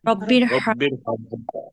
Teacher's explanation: র জবর র হবে। র জবর রা বলা যাবে না।